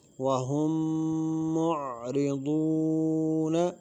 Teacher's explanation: معرضو کی واو مدہ ہے اس کو کھینچ کر پڑھیں گے